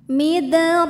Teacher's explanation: yang kecil midro huruf ro dibunyikan secara tafkhim karena harakatnya fathah cara membacanya adalah dibunyikan rnya dengan tebal midro ro hukumnya adalah Mad thobii ziri sebab ada Alif sebelumnya · dibunyikan rnya dengan tebal midro ro hukumnya adalah Mad thobii ziri sebab ada Alif sebelumnya berharakat fathah cara bacanya panjangkan dua harakat